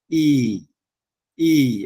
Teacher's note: আর আমরা যেটাকে দীর্ঘ ই বলি, ওইটা কিন্তু পালিতে ই, ই এভাবে মানে দীর্ঘ করে উচ্চারিত হয়। এই যে ইংরেজির রোমান বর্ণগুলো যেগুলো দেখছেন, যেখানে উপরে একটা বার আছে, মানে একটা দাগ আছে, ওইটা কিন্তু দীর্ঘ করে উচ্চারিত হবে।